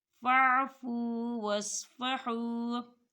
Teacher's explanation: تو یہاں واؤ مدہ ہو رہا ہے، اسے بھی دو حرکت کے برابر کھینچ کے پڑھیں گے